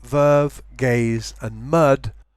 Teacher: the voice sounds at the beginning and the end of each word are slightly devoiced. They lose voice.